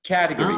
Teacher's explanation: the stress, lexical stress for this word is on the first syllable